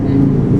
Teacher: Kalau kita pas tengah lidah ini bertemu nempel pada langit-langit jaji, dia akan tidak berhembus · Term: huruf ja